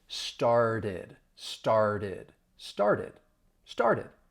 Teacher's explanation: I am going to use a flat T. So instead of the T, it's going to sound like a D because it's following an sound. · I gave you another example of a T following an R, and the T sounds like a flat T